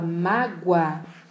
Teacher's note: o som é de u mágua de tongo crescente eu saio do som fraco que é o u para o som mais forte